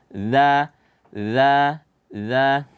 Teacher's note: dza itu tempat keluarnya dari ujung lidah bertemu dengan ujung gigi seri bagian atas